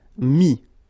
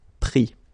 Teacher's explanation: Mettre, E-T-T-R-E, will become I-S. Final S not pronounced, so mettre, to put, mis.